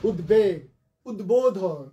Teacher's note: উত উপসর্গ যোগে যে শব্দগুলো হবে সেখানকার বফলাটা উচ্চারিত হবে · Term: বফলার উচ্চারণ